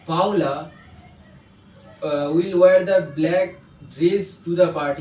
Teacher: Here I intonate the word Paula because I give the importance on the only the name.